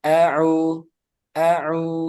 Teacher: Dan ketika membaca taawud jangan a jangan keseret au jadi panjang kan auu jadi langsung au au gitu kemudian fathahnya juga sempurnakan